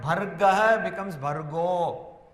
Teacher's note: Again the Visarga becomes Okara, because here it is Dhimahi, so Bhargo Dhiyo Yona Prachodayat.